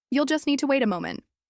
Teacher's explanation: with a gentle rising tone on moment